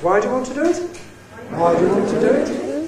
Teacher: you may be misled into hearing an accent on do there, but there isn't. The nucleus is why. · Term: High rise